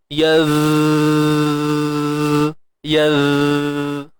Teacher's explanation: sifat yang perlu kita pelihara dengan baik, yang kita nak kena jaga sikit, ialah sifat rakhawah, iaitu suara yang mengalir. Ingat, huruf zal makhraj dia keluar hujung lidah.